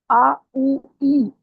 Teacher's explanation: کہیں کوئی ہونٹ کہیں ٹچ نہیں کر رہا، زبان کہیں ٹچ نہیں کر رہی، منہ کے خالی حصے سے ادا ہوتے ہیں یہ تینوں حروف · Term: جوف